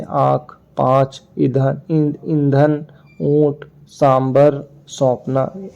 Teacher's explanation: दीर्घ स्वर के पश्चात आने वाले अनुस्वार अनुनासिक के समान बोला जाता है। जैसे आंख, पांच, ईंधन, ऊंट, सांबर, सौंपना आदि।